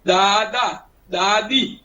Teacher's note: દંત્ય દ જેમાં આપણી જીભ દાંતને સ્પર્શે